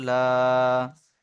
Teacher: সিনের উপরে খাড়া জাবার আলিফ মাদ্দার সমান, তাই খাড়া জাবারকে একালিপ পরিমাণ টান দিয়ে পড়তে হয়।